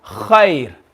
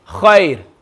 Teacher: You don't need to look at the letter before anymore. As soon as you see there's a ya sakin, straight away that ra will be empty mouth.